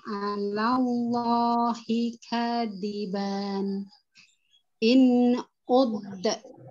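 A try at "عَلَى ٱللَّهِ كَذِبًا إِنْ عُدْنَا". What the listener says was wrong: Nah, ini tidak ada tanda wakofnya ya, alallahi kadiban in udna.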